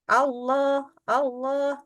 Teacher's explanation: mulutnya enggak pakai maju jadi bilang Allah itu enggak maju mulutnya berarti bukan bulat